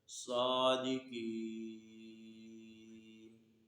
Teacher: تو آپ نے دیکھا کہ صادقین، اس کے اوپر زبر تھا، اس کو ہم نے وقف کی صورت میں ساکن کر دیا ہے اور آواز اور سانس دونوں توڑ دیے